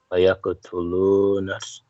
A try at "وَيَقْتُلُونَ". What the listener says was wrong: See, until ويقتلوا because not ويقتلون, just ويقتلوا because we need to connect noon to the next noon, right? ويقتلوا